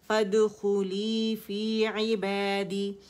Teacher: تو فدخلی فی عبادی، عی کے لیے آواز پھر نیچے جائے گی، اور با کے لیے آواز 2 کاؤنٹ کے لیے اوپر جائے گی، کیونکہ الف صغیرہ با کی آواز کو 2 کاؤنٹ کے لیے اوپر کھینچ رہا ہے. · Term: مد اصلی